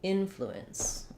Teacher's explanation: in influence we're stressing on the in syllable. Even though it seems maybe like it might be short and unimportant, that's actually where the length goes in this word.